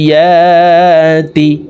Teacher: আইনকে হলকের মধ্যখান থেকে উচ্চারণ করব। আইনের উপরে খাড়া জবর আছে, উপরের দিকে ধাবিত করে এক আলিফ টেনে পড়ব।